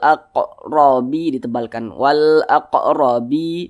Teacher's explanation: maka huruf ra yang memiliki tanda baca fathah dibaca tebal dibaca takhim maka ketika Kita mengucapkannya atau melafazkannya maka pangkal lisan kita itu naik terangkat ke atas